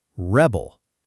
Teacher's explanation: But if you say, "He is a rebel," now it's a noun, stress on the first syllable